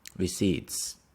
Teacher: we say receipts we don't pronounce the P